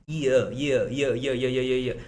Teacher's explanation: य बना हुआ है इ और अ के जोड़ से